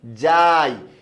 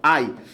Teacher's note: আই টা মৌলিক না যৌগিক অবশ্যই আই টা যৌগিক কেন কারণ আই এর মধ্যে দুইটা স্বরধ্বনি একসাথে উচ্চারিত হয়েছে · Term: যৌগিক স্বরধ্বনি